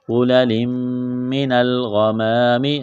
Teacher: پر، نون کو لام کے ساتھ ملائیں گے، غُلَلٍ مِّنَ الْغَمَامِ، غین کو موٹا کرنا ہے ، ایک الف کے برابر کھینچنا ہے، الف سے پہلے زبر،